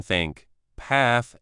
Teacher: In terms of how they are made, these sounds are tricky because they are made by forcing air through a small gap between the tongue and the upper teeth, creating a rubbing sound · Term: th sound